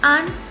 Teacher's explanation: Selanjutnya an dapat disegmentasikan lagi menjadi vokal rendah tak bundar A dan konsonan nasal alveoler N